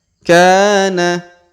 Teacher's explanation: huruf k kita panjangkan dua harakat karena di depannya terdapat Alif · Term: panjangkan 2 harokat